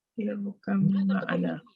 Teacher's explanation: Di antaranya huruf yang keluar daripada dua bibir adalah ba, waw, ba dan mim. Jadi apabila ada huruf ba mati bertemu dengan mim, maka ba tersebut dimasukkan ke dalam huruf mim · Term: idgham mutajanis